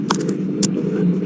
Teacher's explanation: Nunnya masuk sempurna ke huruf mim ya. im langsung seolah-olah itu enggak ada cara membacanya begini. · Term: idgam kamil